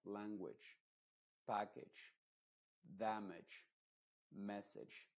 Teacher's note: esta a se está pronunciando como una I modificada